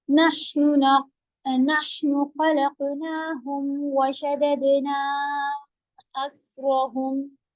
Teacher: شددنا دال پہ قلقلہ اور خلقنا قاف پہ قلقلہ heavy